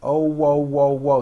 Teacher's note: there's a little hidden w at the very end